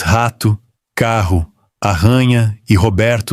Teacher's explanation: você produz, várias vezes por dia, sem pensar, um som raspado no fundo da boca que o falante de inglês não tem e que passa a vida inteira tentando aprender.